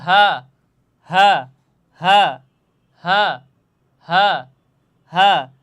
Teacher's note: তাহলে এই হার মাখরাজ কোথায়, হলকের শুরু তথা গলার শুরু হতে এই হাটা উচ্চারণ হবে